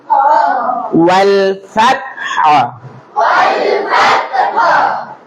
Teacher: ওয়াল, আপনি বললেন ওয়াল ওয়াল হু, ওয়াল হু হবে না, হা উচ্চারণ হবে, একক হবে। যজম যুক্ত অক্ষরটি একক উচ্চারিত হয়, বলেছি আমরা, একক উচ্চারিত হবে।